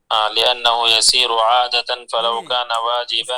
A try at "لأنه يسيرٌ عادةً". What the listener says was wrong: اس کو را کو ضمہ نہیں، را کو ضمتان دینا ہے. لأنه يسير.